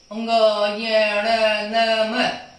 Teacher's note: नासिक्य व्यंजन। अर्थात जिनका उच्चारण नाक से किया जाता है वो नासिक्य व्यंजन कहलाते हैं।